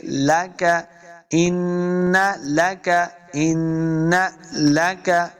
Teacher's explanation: ان لک، ان، دیکھیں پھر نون مشدد ہے، تو ہم نے حمزہ کو نون کے ساتھ ملانا ہے اور غنہ بھی کریں گے۔ ان لک، اس کاف کو موٹا نہیں کریں گے